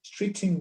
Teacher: Then we link the T with I